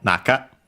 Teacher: on its own accented on the na, so on the first syllable